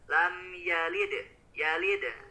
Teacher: Qalqalah yang dibacanya dipantulkan, pantulannya itu pantulan yang kecil, bukan yang besar. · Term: qalqalah sugro